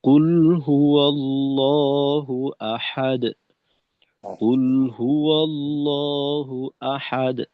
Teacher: কুল হুয়াল্লাহু আহাদ, একটানে পড়তে হবে, মাঝে ঠিক যেন আওয়াজ আহ, গতিরোধ না হয়